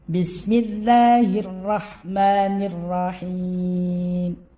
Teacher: Lafzul jalalah dibaca dengan tarqiq tipis.